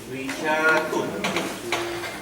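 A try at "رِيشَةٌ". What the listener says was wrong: You're extending that sheen, no extension.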